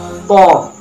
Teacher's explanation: Makhrajul huruf po terletak pada punggung ujung lidah dan pangkal dua gigi seri muka yang atas. Sedangkan sifatul huruf po terdiri dari 6 sifat, yaitu jahar, nafas ditahan.